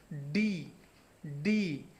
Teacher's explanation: আমাদের মুখের উপরের তালু, অগ্রের উপরের তালু এবং জিহ্বার আগার উল্টা পিঠ থেকে উচ্চারণ হচ্ছে ডি